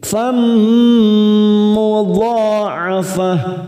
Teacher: Fammu ada fathah tanwin pada huruf fa bertemu mim namanya idgham bi gunnah. Kita tekan 3 ketuk siap masuk pada huruf mim.